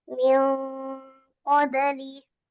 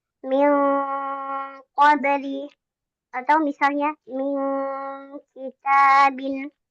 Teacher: nun sukun atau tanwin bertemu dengan kof dan kaf, maka ini sempurna ng-nya ya